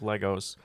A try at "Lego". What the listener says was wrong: it's pronounced Lego, not Legos. Lego